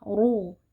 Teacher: rof yang kita harus baca tebal karena r-nya berharakat dhammah. Ru kita angkat pangkal lidah.